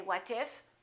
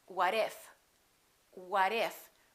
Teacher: look at this we have a t between two vowels and when the t is between two vowels it becomes a fast D